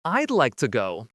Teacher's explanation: we're cutting off all the sounds in the word would except for that final D. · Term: contractions